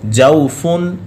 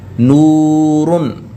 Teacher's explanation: جوفن میں واو لین ہے اور نورن میں واو مدہ ہے، اس وجہ سے یہ لمبا ہوگا